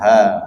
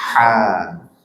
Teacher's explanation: Kalau ha makhrajnya dari tenggorokan bawah, ha. Kalau ha tenggorokan tengah dan cenderung ke atas, ha.